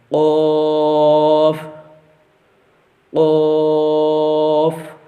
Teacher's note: قاف یہ بھی حروف مستعلیہ میں سے ہے، اس کو بھی جو ہے ہمیشہ پر پڑھا جائے گا. مطلب کہ جو دو نقطوں والا کاف ہوتا ہے اس کو جو ہے وہ باریک نہیں پڑھا جاتا بلکہ اس کو جو پر پڑھا جاتا ہے. · یہ جو زبان کی جڑ ہوتی ہے وہاں سے اور جو تالو کا نرم حصہ ہوتا ہے اس سے یہ جو ہے وہ ادا کیا جاتا ہے